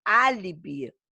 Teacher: álibi é proparoxítona, é a antepenúltima mais forte.